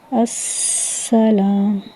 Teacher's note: یہاں پہ بھی سین کی جو ہے آپ نے اس کو سین کو فوکس کرنا ہے، سیٹی کی آواز آئے گی، آواز، اور اس کو جو ہے باریک ادا کریں گے